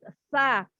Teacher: Ujung lidahnya itu keluar sedikit. Sa seakan tergigit. Sa. Akan tetapi huruf sa ini adalah hamas atau jahar.